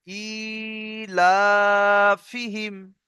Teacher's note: এটা টান হবে না, ফি হিমটা টান হবে না, প্রথম দুটো টান হবে।